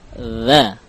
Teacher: dhal memiliki sifat al-jahr, tidak mengalirkan nafas.